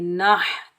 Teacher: नून के ऊपर ज़बर, आगे हा साकिन है, हा को हलक के दरमियान से अदा करेंगे और बगैर खींचे पढ़ेंगे नाह।